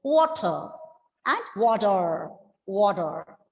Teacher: Water with rounding the lips, wo, and then plosive ta, and at the end of the word R is silent.